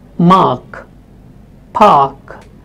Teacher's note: When it is at the end of the word or when it is followed by a consonant sound, this R is actually not spoken. So you might have words like mark, park, where the letter is A but it is not spoken.